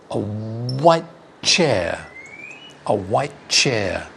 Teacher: We say white and we stop before the t. A white chair and then go chair.